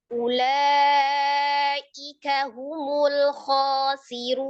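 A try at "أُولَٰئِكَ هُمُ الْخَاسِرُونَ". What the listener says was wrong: Khasirun, bukan pertanyaan. Ulaika humul khasirun. Khabar pada penekanan. Ulaika humul khasirun.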